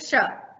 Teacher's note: तालव्य इसलिए कि जब भी हम इस श का उच्चारण करते हैं तो हमारी जीवा तालु को छूते हुए, तालु के ऊपरी हिस्से को, जीवा की नोक जो है तालु को स्पर्श करती है, तो इसका उच्चारण श होता है, जैसे श। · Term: तालव्य श